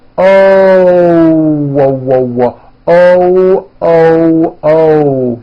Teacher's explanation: When an American speaker makes an O, we end the vowel with a small W sound. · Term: hidden W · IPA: ǝʊ